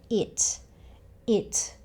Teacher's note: When you say 'it', air actually comes out of your mouth when you make the 't' sound.